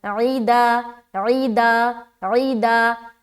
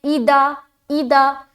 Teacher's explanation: हर्फ आइन हमज़ा से बदल जा रहा है